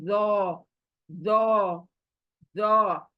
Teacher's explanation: हमारे ऊपर के दांत जबान को टच करेंगे, जबान जरा गोलाई में आएगी और इसको मोटा पड़ेगी। जो, पढ़ के देखें आप, सामने जबान लेकर आए, ऊपर के दांत टच करे, लेकिन जबान को गोलाई में रखे।